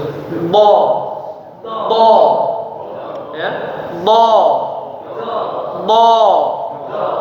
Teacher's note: pinggir lidah ditekan ke gigi geraham sehingga kerasa kalau angin itu keluar sampai lewat pinggir sehingga ada tekanan di pipi. Kerasa pipinya agak ditekan ya.